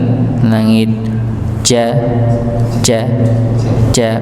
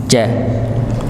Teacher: tengah lidah bertemu dengan langit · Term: huruf jim